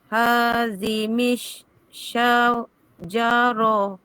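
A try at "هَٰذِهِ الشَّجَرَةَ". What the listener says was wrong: Tertukar huruf sekali lagi. Ni huruf apa ni? Bukan mi. Tadi baca mi tu. Hadhihi. Hisya.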